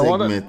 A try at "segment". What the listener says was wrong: it's a segment, yes, a segment, but you don't let it come so thick. You don't, no, not segment, it's segment, segment, You don't let it come so thick, you know.